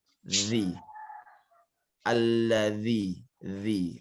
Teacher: Kemudian objek kedua adalah huruf dzal. Dia mesti dijepit dengan gigi bagian atas.